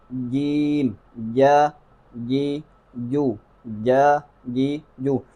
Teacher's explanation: آگے جیم کے متعلق میں نے آپ کو ایک ہنٹ دی ہے، یعنی جیم کو اکثر غلط پڑھا جاتا ہے، جیم کو زبان کے درمیان سے پڑھنا ہے